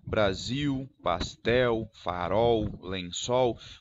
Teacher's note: a letra L, se ela estiver após uma vogal, ela também pode representar um som de semivogal em grande parte do Brasil. Em alguns lugares do Brasil é pronunciado, por exemplo, a palavra Brasil, eles pronunciariam Brasil, farol, pastel, lençol.